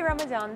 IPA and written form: ˌræməˈdɑːn (Ramadan)